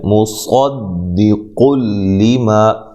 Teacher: یہاں نون تنوین کا ادغام بلا غنہ ہے، ادغام ہے لیکن بلا غنہ، غنہ نہیں کرنا